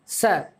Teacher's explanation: स मतलब हमारी जो दांत है, दांत के जस्ट पीछे वाला जो हिस्सा है वहां से ये ध्वनि निकलती है